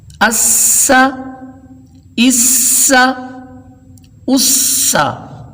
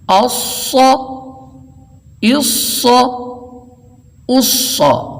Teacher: سین اور صاد ایک ہی مخرج سے ادا ہونے والے حرف، لیکن سین باریک اور صاد موٹا. اور دوسری اس میں ایک وضاحت پھر کر دوں کہ صاد کے آخر میں چونکہ دال آتی ہے، یہ 3 حرفی حرف ہے، صاد الف دال مل کر صاد کی آواز بنتی ہے.